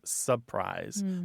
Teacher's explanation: Surprise is a very common one. It often comes out as surprise. That first R is gone. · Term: dissimilation